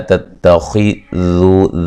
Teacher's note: ذال کو نرم ادا کریں گے، باریک پڑھیں گے